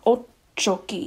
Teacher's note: the double t kind of just means that um it's a long ch sound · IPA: ʼoččoki